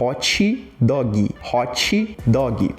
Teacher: o brasileiro tende a colocar um TSH entre esse T. Principalmente o brasileiro não nordestino, o brasileiro aqui mais essa porção centro-sul do país.